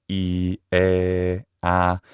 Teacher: in other vowels like e, a, a, those vowels are unrounded